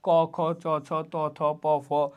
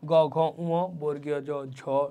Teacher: কিছু ব্যঞ্জন উচ্চারণে স্বরতন্ত্র কম্পিত হয়, এগুলো হলো ঘোষ, এবং কিছুর ক্ষেত্রে স্বরতন্ত্র কম্পিত হয় না, সেগুলোকে বলা হয় অঘোষ।